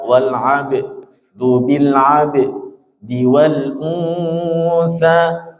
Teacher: Ba yang bersukun dinamakan qalqalah.